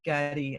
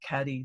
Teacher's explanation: But generally we say that Aboriginal words start with what we call a voiced sound. So the difference between g and k is that when you say g, you use your vocal cords